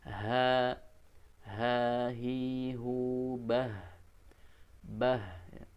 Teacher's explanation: tempatkanlah huruf H itu pada makhlukNya yaitu tenggorokan bawah bukan di rongga dada